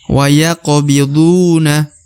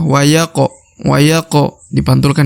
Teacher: huruf ko atau huruf qaf dibaca pantul karena huruf qaf yang berharokat sukun atau harokat mati dia termasuk salah satu daripada huruf-huruf pantul atau huruf qalqalah ya.